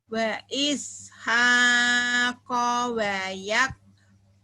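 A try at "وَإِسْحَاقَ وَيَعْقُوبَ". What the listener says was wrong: ya ain. Wa yaqub. Wa ishaqo wa yaqub. Itu memang ain agak susah ya Bu ya.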